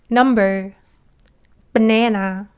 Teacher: when pronouncing English N sound, your tongue doesn't touch right behind your teeth, but you kind of roll your tongue a little bit and it touches the part a bit far away from your front teeth. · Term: English and sound